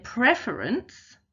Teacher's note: Whereas in preference, the pref is our stressed syllable, so therefore we've got an unstressed syllable next, so therefore we don't double before we add the ENCE.